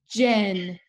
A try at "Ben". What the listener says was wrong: Ben. Listen to the first sound of this word. Buh, buh, Ben. Watch my mouth. Look how my lips are moving. Ben.